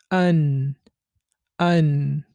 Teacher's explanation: যেবার আগা তার বরাবর উপরের তালের সাথে লাগিয়ে নুন উচ্চারিত হয়